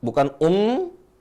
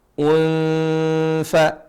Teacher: ketika mengikhfan Nun itu sudah mengarah kepada tempat keluarnya huruf Fa yaitu gigi ujung gigi ketemu bibir bawah